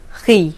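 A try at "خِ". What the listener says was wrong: Pull the corners of your mouth back more.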